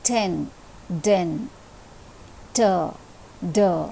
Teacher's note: the tip of the tongue is being raised and it is touching the back portion of the upper front teeth